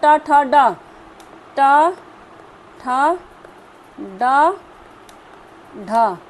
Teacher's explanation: ड का उच्चारण किससे होता है? मूर्धन्य से होता है